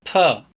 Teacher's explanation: With the maximum airflow, a candle-blowing sound [p] is produced